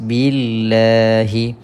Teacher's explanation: Kita jumpa dengan kalimah Allah yang mana kita baca dengan nipis.